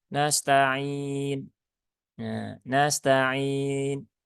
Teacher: Terburu-buru menutup bibir ketika wakaf pada kata nasta'inu. Nah, kalau dia terburu-buru menutup bibir, nah pasti sifat tawasudnya hilang